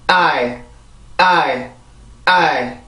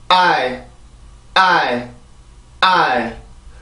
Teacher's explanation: 아 발음은 정확하게 발음을 해주고 이 발음은 풀려요, 소리가. 그래서 I 이렇게 소리만 풀려서 발음을 해주게 되고요. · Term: 이중모음